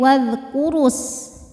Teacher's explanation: Namun dibaca panjangnya hanya saat berhenti saja. Kalau wasal, madnya gugur, ra-nya pendek.